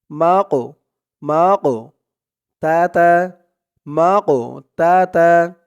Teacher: কফটা কলকলার হরফ ধাক্কা দিয়ে পড়তে হবে